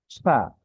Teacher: উচ্চারণের ক্ষেত্রে একদমই সহজ, সামনের উপরে দাঁত, নিচে ঠোঁটের পেট, অর্থাৎ এই যে দাঁত আর এই আমাদের এই ঠোঁটে লাগবে। ফা, ফা, আগে বাতাসটা বের করবো।